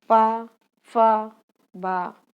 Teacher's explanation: होंठ से जो उच्चारित होने वाली ध्वनि है वो है प, फ, बा।